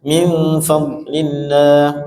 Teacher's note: makhraj dad, dua sisi lidah menyentuh gigi geraham atas ya, kanan kiri itu salah satunya